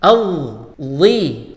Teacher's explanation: pakai huruf dha yang keluar dari ujung lidah bertemu dengan ujung gigi seri atas